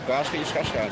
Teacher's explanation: Também veio com imigrantes portugueses das ilhas do Atlântico que pronunciavam o S muito arrastado. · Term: chiado